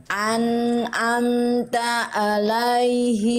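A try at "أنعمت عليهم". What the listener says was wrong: Ah, itu Bunda udah bagus tapi masih nanggung. Jadi kurang pol ainnya. Jadi masih samar-samar ke hamzah. Coba lagi Bunda ikuti saya. A. Itu hamzah. Sekarang tekan lagi dikit ke atas. A.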